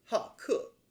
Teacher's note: the 好 has the fourth tone because of its placement right here with 客